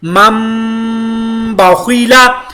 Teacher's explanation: نون ساکن کے بعد جب بھی با آئے گی تو وہاں پر میم کا اقلاب ہوگا